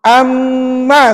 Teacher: itu bunyi mim yang bersabdu kedengarannya ada bunyi sengau Tak bunyi sengau tu di mana mestiah dalam rongga hidung kita